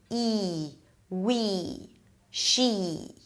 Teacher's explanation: Okay, it's a high vowel, high because the tongue is high. It's a tense vowel because all the articulation organs are really tense. The lips pull to the sides a bit.